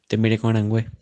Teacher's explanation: Notice that the suffix que becomes ngue because the preceding vowel is nasal